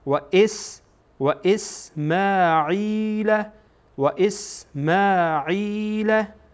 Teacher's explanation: این حمزه با سین وصل میشه باهم خوانده میشه